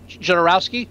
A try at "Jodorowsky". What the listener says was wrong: Well, and I've always heard it, and they say it in the documentary, but it's the J sounds like a Y, Jodorowsky.